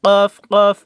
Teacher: কফ উচ্চারণ হবে জিহ্বার গোড়া তার বরাবর উপরের তালুর সঙ্গে লাগাইয়া 2 নোক্তাওয়ালা কফ।